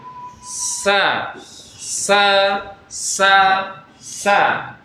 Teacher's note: Maksud suaranya tidak tertahan ya. Udara keluar, suara tidak tertahan. Jadi mengalir.